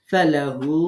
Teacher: বালা এক আলিফ মাদ, মান আসলামা, ওয়াজ জিমে কলকলা, হা হু হুতে এক আলিফ মাদ, লিল্লাহি আল্লাহ শব্দের লাম বারিক হবে, ওয়া হুয়া মুহসিনু ইকফা গুন্না, ফালাহু হুতে তিন আলিফ মাদ